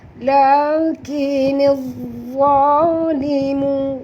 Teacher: Zat tebal kerana huruf zat adalah huruf isti'la.